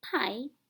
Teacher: the air stream is first stopped or blocked in your mouth and then released with a puff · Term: stop sounds